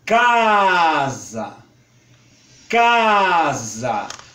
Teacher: se pode depreender comparando-se os dois tipos em casa em casa Observe que o que tem maior destaque e o que é mais aberto é o primeiro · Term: A reduzido